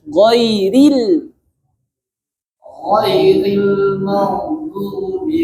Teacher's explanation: Go tebal, ri tipis.